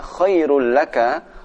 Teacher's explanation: walaupun dhammahnya double tapi tidak dibaca dengung, tapi dibaca dengan cepat